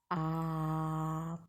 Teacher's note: इसे बोलने पर आ पूरा मुख खुल जाता है इसलिए इसे विवत बोलते हैं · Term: विव्रत